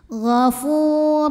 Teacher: tanwin masuk ke ro gur tanpa berdengung artinya tidak perlu ditahan jadi ini masuknya Idam bilagunah yang Kamil masuk tanwin ke huruf